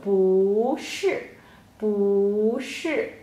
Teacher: So 不 before 是 不 will change to a rising tone